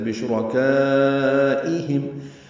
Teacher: ہم میں میم ساکن پہ اظہار شفوی ہے